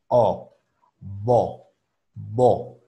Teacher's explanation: una O cerrada, no es una O hueca